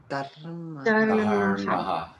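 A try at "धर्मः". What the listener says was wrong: I think somebody missed the aspiration on the dha sound. Dharmaha.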